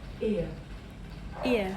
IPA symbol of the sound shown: ɪə